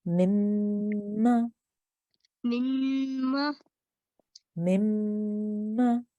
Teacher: you hold on the nasal sound, you hold on the joining sound for about 2 seconds before you pronounce the fatha sound on the top. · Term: meme gunna